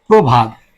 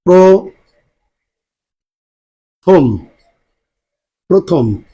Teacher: তাহলে পূর্বের পূর্বের এই অটা আর অ থাকে না, এটা পরিবর্তিত হয়ে কি হয়, ওকার হয়। তাহলে এর উচ্চারণটা আমাদের হচ্ছে প্রভাত, উচ্চারণটা হচ্ছে প্রভাত।